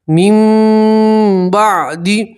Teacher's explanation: اوتوہ من بعد یہاں نون سکین کا قلب کا قاعدہ ہے. نون سکین کے بعد جب با آتی ہے تو نون سکین کو آپ میم سے بدلیں گے اور اخفا غنہ کے ساتھ پڑھیں گے. اب یہ نون کو آپ نہیں پڑھیں گے, میم کو آپ اس چھوٹی سی میم سے ملائیں گے.